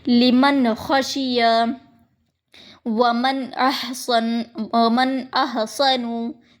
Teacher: نون کی آواز ظاہر ہو رہی ہے کیونکہ نون ساکن کے بعد حمزہ آیا ہے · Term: اظہار